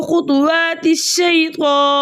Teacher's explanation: یائلین کو 1.5 حرکت کی دیر لگا کر نرمی اور سہولت سے پڑھتے ہیں